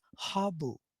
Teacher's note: it turns out in surti charatari and katyawadi as habu okay so it shows s goes to h